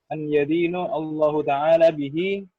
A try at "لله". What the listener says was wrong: Enggak, an yadinu li. Ini kalau enggak ada alif bacanya lillahi.